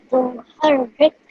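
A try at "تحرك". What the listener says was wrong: Tuharrik. Don't rush the rik part, darling, yeah?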